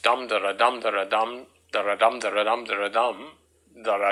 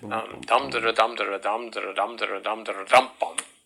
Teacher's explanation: that process of the swallowing or the losing of the last syllable is called catalexis